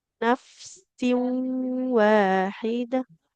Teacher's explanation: Kalau tanwin bertemu wawu dia melebur ya ke huruf wawu.